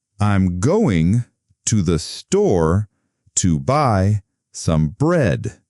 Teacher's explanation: Did you hear the stress on store and bread? Those are the most important words for meaning.